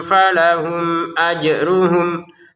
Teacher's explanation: Falahum mim sukun bertemu hamzah kita baca dengan jelas ya. Falahum ajruhum. Jelas artinya tidak ada samar, tidak ada dengung. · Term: dibaca dengan jelas